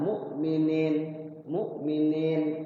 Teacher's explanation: Kan dibacanya itu cuma 2 ketukan, mu'minin, mu'minin. Ni-nya panjang, ada ya-nya, ada mad tabi'inya. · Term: mad arid lis sukun